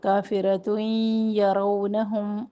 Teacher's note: کافرتین تنوین کے بعد یا ادغام کریں گے ادغام غنہ کے ساتھ